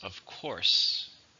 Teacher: As you see here, the stress is on course.